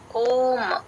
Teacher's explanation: అది అచ్చండి కంఠంలో నుంచి రావాలి